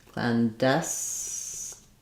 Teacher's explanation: a little secondary stress on Clan